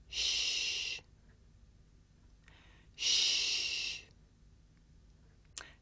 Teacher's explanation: This is a voiceless consonant. It's pronounced sh. This is the sound you make if you want someone to be quiet.